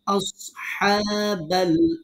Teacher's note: মুখটা গোল করতে হবে, সোয়াদ পুর হবে যেন আবার আস না হয়ে যায়, সিন না হয়ে যায়। একটু খেয়াল করে উচ্চারণ করতে হবে।